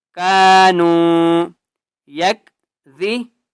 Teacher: کانو، قاف کو بھی ایک الف کی مقدار لمبا کریں گے، نون واو پیش نو، واو مدہ ہے، نون کو بھی ایک الف کی مقدار کھینچ کر پڑھیں گے